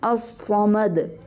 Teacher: الف باریک ہے، لام باریک ہے، صاد جو ہے وہ پر ہے، الصمد، میم باریک ہے، آگے سے دال جو ہے اس کے اوپر قلقلہ کر رہی ہوں میں، کیونکہ دال کو میں ساکن کر رہی ہوں، الصمد، الصمد.